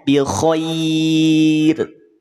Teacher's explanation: maka pastikan huruf ro-nya menjadi tipis, PLTN, pangkal lidah tidak naik